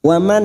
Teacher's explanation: Waman nun sukun bertemu hamzah idhar halki dibaca jelas tanpa mendengung.